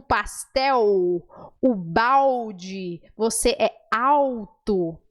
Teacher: A letra L no português tem som de L, de lábio, mas também, quando ela está no final de uma palavra ou antes de uma consoante, ela vira U